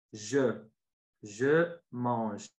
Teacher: I put my mouth like I'm gonna say you, but I say je. And the E in the final, at the end of mange, it's not pronounced. It disappears because it's caduc